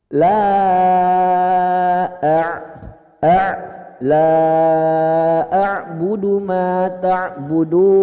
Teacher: Ain itu di tenggorokan tengah Pak ya.